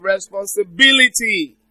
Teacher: the stress is on the third syllable from the end